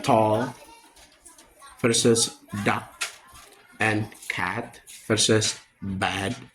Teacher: Both are alveolar plosive, produced by placing the tongue behind the upper teeth.